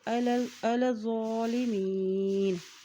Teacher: ذو کے اوپر کھڑی زبر بھی ہے اس لیے اس کو ایک حرکت لمبا بھی ادا کریں گے